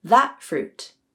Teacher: That used a glottal stop.